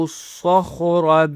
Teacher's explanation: کھینچنا ہے، با پیش صاد کے ساتھ کنیکٹ ہو رہا ہے، صاد کو اور خو کو موٹا کرنا ہے اور را کو بھی موٹا کرنا ہے